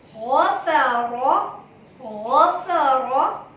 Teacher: Do you hear the little gargle at the start?